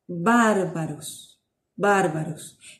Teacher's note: La consonante beta se pronuncia muy similar a nuestra B, ¿sí? Pero a la B larga, que es bilabial, para lo cual se utilizan los dos labios, ¿sí? Así pronunciamos bárbaros, bárbaros.